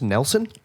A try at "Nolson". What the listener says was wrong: No, it's an O. Nolson, I think.